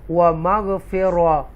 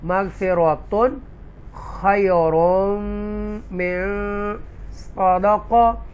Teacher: پڑھیں گے، رائٹ، وَمَغْفِرَةٌ، تو ایسے نہیں کریں گے، اکفا نہیں، گنہ نہیں کریں گے، کلیئر پڑھیں گے تنوین کی آواز کو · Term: اظہار